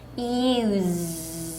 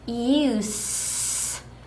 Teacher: 그래서 이 단어는 문장에서 명사로 쓰였는지 동사로 쓰였는지를 보시고 거기에 맞는 발음으로 읽어주시면 됩니다. 자, 동사일 경우에는 다시 use 떨린 소리 z 발음 냈어요. 자, 명사 사용일 때는 use 새는 소리 s로 발음했습니다.